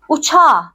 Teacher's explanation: o zaman k yumuşak g'ye dönüşüyor arkadaşlar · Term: ünsüz yumuşaması